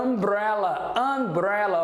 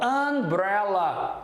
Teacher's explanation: tem um som de A nasalizado, ó. Umbrella.